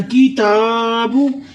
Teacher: जा को लंबा करते हुए, काफ को बारीक पढ़ते हुए, इस डंडे वाले काफ को भी किताब। किताब ता पर आपने खड़ी करनी है, लंबा करना है